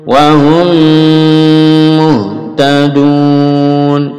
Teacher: ميم bertemu ميم dilebur lagi didengungkan lalu dipanjangkan dengungnya